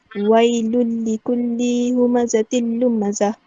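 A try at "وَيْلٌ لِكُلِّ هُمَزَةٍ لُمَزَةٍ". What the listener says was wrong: Li kat situ dia bukan 2 harakat dia tak ada harakat kat situ. So kita baca wailul likulli humazatil lumazah.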